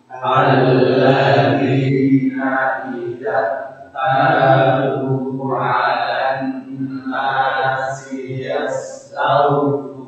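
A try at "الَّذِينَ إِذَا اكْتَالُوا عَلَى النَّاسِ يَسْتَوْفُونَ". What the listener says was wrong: Sama di sini ada lin juga, huruf ta berharokat fathah bertemu dengan waw sukun. Ini sama, jadi ketika membacanya harus 50-50, jangan terlalu cepat. Taufun, kan terlalu cepat ke wawnya, atau terlalu lama. Taufun itu juga kurang tepat.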